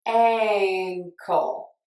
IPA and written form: ˈæŋ.kəl (Ankle)